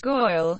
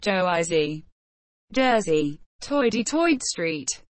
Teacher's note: In the most old-fashioned and extreme versions of the New York dialect, the vowel sounds of words like girl and of words like oil became a diphthong. This is often misperceived by speakers of other accents as a reversal of the er and oi sounds, so that girl is pronounced goil and oil is pronounced earl.